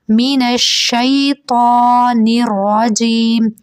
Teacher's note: تا کے اوپر کھڑا زبر ہے اس لیے اسے تھوڑا سا کھینچ کے پڑھیں گے